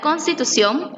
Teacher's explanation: la palabra constitución lleva acento prosódico en la última sílaba en este caso si se tilda por las reglas de titulación